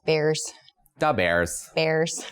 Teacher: It draws out a lot of vowel sounds. A lot of Midwestern accent draws out vowel sounds and makes them a little higher on your palate, I guess. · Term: Chicago accent